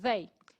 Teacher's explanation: Faz o Z, e aí coloca a língua entre os dentes.